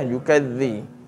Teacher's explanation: Jadi zal ni memang lidah kita ni memang kena dikeluarkan. Kalau tidak dia akan cenderung menjadi safir. J huruf zal ni dia tidak ada sifat safir dalam keadaan dia a menyebut lidah tu mesti dikeluarkan sebagaimana huruf sa zal dan juga d kan.